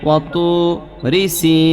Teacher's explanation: 3 আলিফ পরিমাণ টান দিব, আর মদের নামটা চেঞ্জ হইয়া মধ্যে আরজি হবে